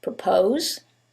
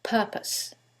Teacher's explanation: in the first one it's the second syllable that's stressed and in the second one is the first syllable and that changes the pronunciation completely the first word is propose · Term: word stress